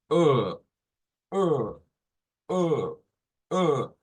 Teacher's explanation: no es tan abierta como la a es y la lengua hacia atrás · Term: A retrofleja